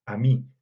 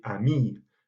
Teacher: Par exemple, la différence entre certains masculins et féminins qui se faisait justement grâce à l'allongement de la voyelle. On entendait prononcer de manière claire ami avec un i court pour le masculin et ami avec un i long pour le féminin